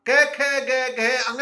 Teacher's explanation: कंठ से उच्चारण होता है सबसे पहले वर्ग का, कै वर्ग का। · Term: कंठ ध्वनियां